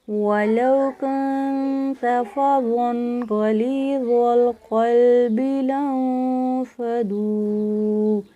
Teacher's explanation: زوا موٹا پڑا ہے، غین موٹا پڑا ہے، لیکن باقی لفظ میں نے باریک پڑھے ہیں